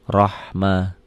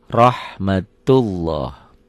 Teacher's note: Lafaz Allahnya dibaca tebal karena barisnya di atas.